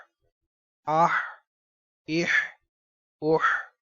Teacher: ہا حلق کے درمیان والے حصے سے ادا کریں گے